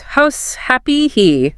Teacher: Really push out a puff of air before the vowel. Think of it like a sigh. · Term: H sound